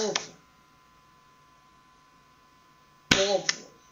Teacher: vamos então bater palmas mais forte no primeiro O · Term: paroxítona